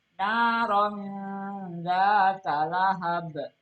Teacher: Nah, ini tanwin ketemu dengan zal. Berarti ini adalah tanwin ketemu dengan zal adalah ihfa. Bacanya ihfa adalah samar.